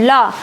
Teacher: ला मतलब जब बोलते इस टाइम जो साउंड आती है तो बगल से निकलती है, तो इसको पार्श्विक बोलते हैं